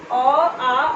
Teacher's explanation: अ, आ और कवर्ग और विसर्ग, ये सभी का उच्चारण स्थान जो होता है वो कंठ होता है। ठीक है, कंठ होता है, उसको क्या बोलते हैं, कंठ्य।